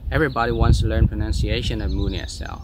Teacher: They just stress on some words like wants, learn, pronunciation, and Moon ESL.